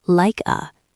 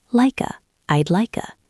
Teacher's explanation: This is a gold mine for linking like a the K slides over to the A.